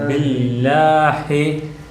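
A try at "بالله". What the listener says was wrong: ஹி இல்லை, அந்த இந்த பாருங்கள், இந்த லைட்டாக இந்த ஹாட சவுண்ட் வந்துடுது. பில்லாஹி அப்படி போயிடக்கூடாது. பில்லாஹி பில்லாஹி ஹி ஹி ஹி. அதில் ஒரு ஹா, உபைதுர் ரஹ்மானில் ஹா தான் வருது. பில்லாஹி இது ஹா, ஹி இல்லை ஹா. இன்றைக்கு இந்த கடைசி இடம், இந்த இடத்துக்கு கொடுக்கக்கூடாது, இந்த இடத்துலேருந்து வெளியாகணும். நெஞ்சிக்கிட்டு இருந்து அந்த காற்று வாரத்தோடையே வர்றது.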